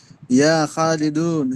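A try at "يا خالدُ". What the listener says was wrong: প্রথমটাই ভুল হয়ে গেছে, আপনি তানবিন লাগাইলেন কেন? আপনাদেরকে বললাম না, ইয়া আসলে পরবর্তী যেটা আসবে ওটার উপর একবারে চোখ বন্ধ হইরা জবর পড়বেন, জবর এই পেশ পড়বেন, ইয়া খালিদু। দুন হবে না, দু হবে।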